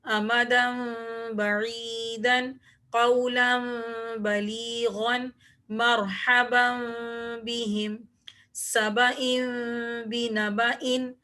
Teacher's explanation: آپ کو تمام مثالوں کے اندر نون ساکن کے بعد جب با آ رہا ہے تو ایک چھوٹا سا میم لکھا ہوا نظر آ رہا ہوگا، تو یہاں پر ہم نون ساکن کی آواز کو، دو زبر کی آواز کو، دو زیر کی آواز کو اور دو پیش کی آواز کو میم سے بدل کر پڑھیں گے، غنہ کر کے